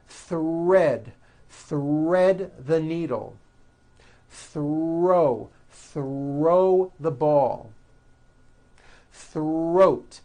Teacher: the r is the strongest sound of the blend and is louder than the th